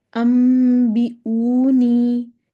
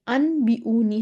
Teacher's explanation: نون ساکن کے بعد با آ گیا تو نون کو ہم نے میم سے بدل دیا. یہ انبیونی ہم اس کو نہیں کریں گے، اس کو امبیونی کریں گے، امبیونی. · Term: اقلاب